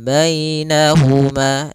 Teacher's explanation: ada ya sukun didahului dengan fathah. Ini bacaan lin lagi lembut dalam pelafalannya